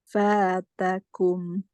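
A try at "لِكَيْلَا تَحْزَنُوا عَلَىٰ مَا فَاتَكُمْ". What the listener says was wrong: percikan saja ya jangan F kalau Fa terlalu basah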